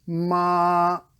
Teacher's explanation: So for the fourth tone, it's a short, kind of violent sound. It's like a samurai chopping down.